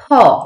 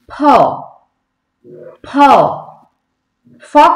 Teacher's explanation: আমাদের দুটো ঠোঁট কিন্তু একসাথে মিলে যাবে, মানে একসাথে লাগবে। ফ, ফ, ফ কিন্তু না, উপরের দাঁত কিন্তু নিচের ঠোঁটে এসে মিলবে না।